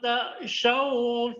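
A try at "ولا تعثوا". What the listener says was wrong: Wala ta'thaw, thaw itu bukan syaw. Wala ta'thaw, tha.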